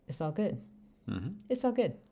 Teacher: notice the T and the L have pretty much disappeared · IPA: [ɪsagʊd]